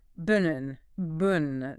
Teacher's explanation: The T is an alveolar stop, just like D, but voiceless. The N is an alveolar nasal, so the T release goes nasal. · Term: nasal plosive